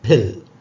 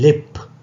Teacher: Here pa is not aspirated because it is coming finally.